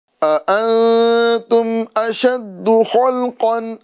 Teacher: دونوں حمزہ کو تحقیق کے ساتھ ادا کرنا ہے